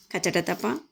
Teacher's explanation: స్వరపేటికలో నారతంత్రులు కంపింప చేయకుండా నిర్గమించే ఊపిరి. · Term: శ్వాసములు